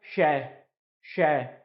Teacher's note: तो बाहर हवा निकल रही है मुंह से, इसका मतलब ऊष्म व्यंजन हो गया